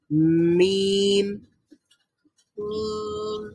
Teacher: মিম হচ্ছে ঠোঁট খোলার আগেই সাউন্ডটা তৈরি হয়ে যায়, কারণ নাক দিয়ে বের করছি।